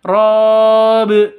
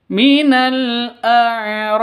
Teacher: b-nya yang awalnya kasrah berubah menjadi sukun atau mati karena wakaf berhenti ya kalau tidak berhenti ya tetap Bi bacanya kalau karena berhenti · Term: qolqolah kubro